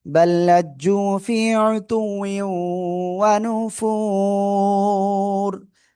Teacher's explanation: এই যে তানবিনের পরে ঈদগামে বা গুণার অক্ষর ওয়াও গুণার সাথে মিলিয়ে পড়বো।